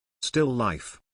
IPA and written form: ˌstɪl ˈlaɪf (Still Life)